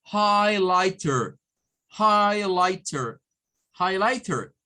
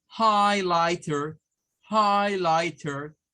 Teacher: lleva la sílaba tónica en high, pero esta tiene tres sílabas